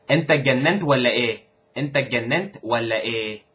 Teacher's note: all the J's, all the Jims. Jim becomes G. It's pronounced just like an English G.